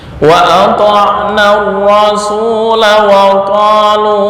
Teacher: ketika wakaf alif kelihatan terbaca, tapi ketika wasol alif menjadi hilang